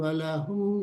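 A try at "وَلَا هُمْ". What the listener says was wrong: wala, lanya panjang.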